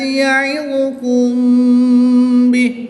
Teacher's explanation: یہاں پر میم ساکن کے بعد حرف با ہے تو یہاں پر اخفا شفوی ہوگا